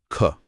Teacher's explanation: अगर हम ख ध्वनि को देखें तो उस का उच्चारण स्थान कंठ है। आभ्यंतर प्रयत्न स्पष्ट है और बाह्य प्रयत्न अघोष और महाप्राण है